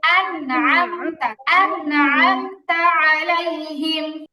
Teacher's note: দ্রুত পড়তে হবে, হামিম জের হিম, টান হবে না